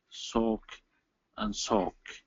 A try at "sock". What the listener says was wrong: You're saying soak and soak. They're spelled very similar right with that O. So I want you to open up that a little bit. Sa. Sock. Soak. For me, it's lip position. Neutral lips, ah. Rounded lips, oh.